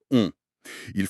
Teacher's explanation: former un cercle bien rond avec les lèvres et laisser l'air vibrer dans la cavité nasale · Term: voyelle nasal